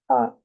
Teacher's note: je dis bien A, ça vient du fond de la gorge. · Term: la lettre A